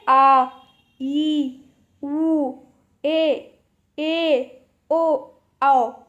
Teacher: इनको थोड़ा खींचना पड़ रहा है एज़ कम्पेयर टू ह्रस्व स्वर। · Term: दीर्घ स्वर